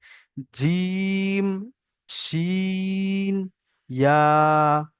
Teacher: 6 নম্বর মাখরাজ, জিভের মাঝখান, মাঝখান কোনটা আমি আশা করি আপনাদের বলে দিতে হবে না, আর দেখেও দিতে হবে না। জিভের মাঝখান আর তার বরাবর উপরের তালুর সঙ্গে লাগিয়ে একদম পুরো চেপে উচ্চারণ হবে।